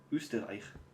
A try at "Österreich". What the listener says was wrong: That's not what it's called. It's Ö in the beginning. Österreich.